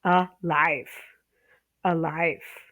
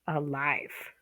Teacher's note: That's a stress on the second syllable